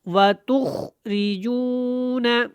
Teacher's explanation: واو زبر و، تا خا پیش تخ، را زیر ری، و تخ ری، جیم واو پیش جو، و تخ ری جو، واو ساکن جو ہے یہاں پہ جزم ہے، اس سے پہلے پیش ہے تو یہ واو مدہ ہے، تھوڑا سا لمبا ہوگا